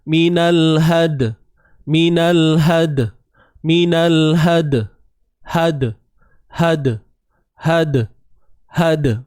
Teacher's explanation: Tu bunyi dia qalqalah sughra pada dal